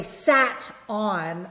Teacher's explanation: I connect that, sat on, and I get the flap sound.